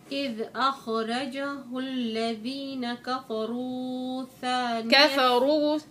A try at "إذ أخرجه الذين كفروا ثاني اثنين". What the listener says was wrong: كفروا ثاني ما تمد زيادة